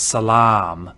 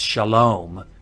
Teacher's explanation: if you know the Arabic word for peace it's Salam and that long ah in Arabic is now an o in Hebrew